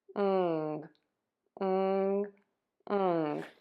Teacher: To make this sound the tip of your tongue is low, the back of your tongue is pulled way high up, and the air is going to move out of your nose. ng ng ng So we have r-i-ng ring wring ring wring ring wring ring wring And now for a sentence I remove my ring when I need to wring out the laundry. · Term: ng sound